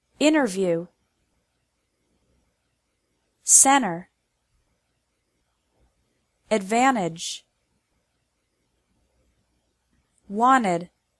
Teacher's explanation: This varies from person to person, and it depends on the region the speaker is from. But in some words, the sound of the letter T really disappears, especially when there is an N or S before it. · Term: disappearing T, Disappearing T